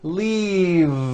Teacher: keep the voice in going throughout the whole word and voice the V leave like that if you stop the voicing at the end · throughout the whole word and voice the V leave like that if you stop the voicing at the end of the vowel E then you would be saying leaf with an unvoiced F and the word we're trying to say is leave with that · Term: voiced V